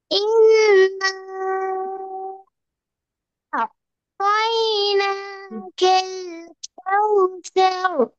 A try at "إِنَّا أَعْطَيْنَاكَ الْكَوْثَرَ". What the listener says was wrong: இன்னாவ சரியா நீட்டி எடுத்துடா திரும்ப.